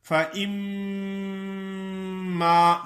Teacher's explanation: منہ تو بند ہو جاتا ہے لیکن آواز غنے کی ناک سے نکلتی ہے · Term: میم مشدد